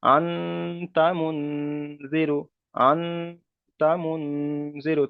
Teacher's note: এখানে বলবেন যে নুন সাকিনের পরে হুরুফে ইকফার 15টি অক্ষরের মধ্যে থেকে তা এসেছে, তাই নুন সাকিনের আওয়াজকে নাকে তুলে একালি পরিমাণ গণনা করে পড়তে হবে।